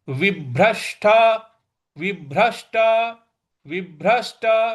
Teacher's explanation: व के बाद जो भ है उस पर हमको आघात देना है।